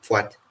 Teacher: we have the labial form of the P sound